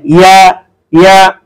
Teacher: সম্মানিত পাঠক, তারপরে যে উচ্চারণটা একেবারে শেষের সেটা হচ্ছে ইয়া, জিহ্বার মধ্যখান তার বরাবর উপরের তালুর সঙ্গে লাগিয়ে উচ্চারণ করতে হয়